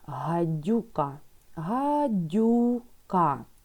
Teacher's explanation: Знову Д приголосний. Значить, у нас буковка Ю позначає звук У і Д у нас пом'якшений